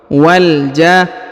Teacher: Perhatikan huruf wa langsung disambung ke huruf lam yang berharokat sukun. Wal ja. Kemudian huruf ja dipanjangkan 6 harokat ya.